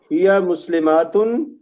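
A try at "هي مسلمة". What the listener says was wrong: ہیا مسلماتن نہیں ہیا مسلمتن. جمع کا لفظ رہتا ہے.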